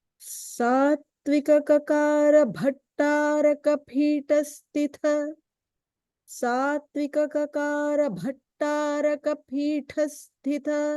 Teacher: just keep in mind the Bha is the Mahaprana